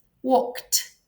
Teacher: When we have a voiceless sound k at the end, the ed will be pronounced as t, walked.